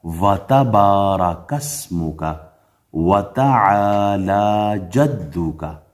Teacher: اس کو وتبارک اسمک یعنی واو کو تا کے ساتھ جوڑنا نہیں ہے، الگ الگ پڑھنا ہے